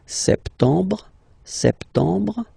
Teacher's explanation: Remember this EM en septembre. You don't insist on the final E.